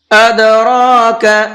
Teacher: یہ دال بھی حروف قلقلہ میں سے ہے اور ساکن بھی ہے تو اس کے اندر بھی ہلکا سا آواز کو ڈبل کریں گے۔ کس طرح سے؟ ادراک، اس طرح سے۔